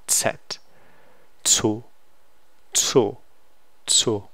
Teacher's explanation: basically this is T and S pronounced as one sound